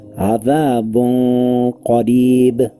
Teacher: I slightly hid the noon and kept the nasal sound on the makhraj of the next letter. I lengthened it for 2 counts with a heavy nasal sound. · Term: Ikhfa